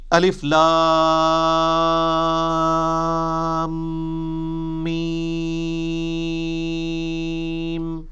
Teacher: لام اور میم چونکہ اس کا جنکشن ہے تو میم کے اوپر تشدید بھی ہے، غنہ بھی ہو رہا ہوگا